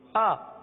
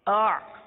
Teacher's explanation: حمزہ سخت ہے, حمزہ سختی کے ساتھ ادا ہوتا ہے, جیسے آ. حمزہ کے اندر سختی ہے آ, اور عین کے اندر نرمی ہے